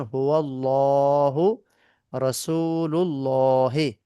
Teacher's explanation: আল্লাহ শব্দের লামকে পুর মানে মুখ গোল করে পড়তে হবে